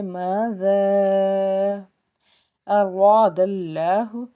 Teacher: زال کے بعد آگے مد ہے تو اس کو ہم نے تین الف کے برابر کھینچنا ہے · را کو ہم پر پڑیں گے کیونکہ را کے اوپر زبر ہے، الف سے پیچھے زبر ہونے کی وجہ سے یہاں پہ بھی ایک الف کے برابر کھینچنا ہے۔ · آگے اسم الجلالہ اللہ ہے تو پھر ہم زبر کی وجہ سے لفظ اللہ کو پر پڑیں گے، اللہ کے اوپر کھڑی زبر اس لیے ایک الف کے برابر کھینچنا بھی ہے۔